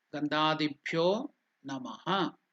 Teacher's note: Gandha, dibhyo, and bhyo is also elongated. That is dirgha.